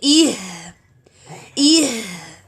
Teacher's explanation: we have to close the vocal cords, then open it. E, then Ha sukun.